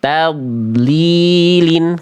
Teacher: Jadi dod itu punya sifat istitolah dan rakhawah. Ngalir bareng tuh.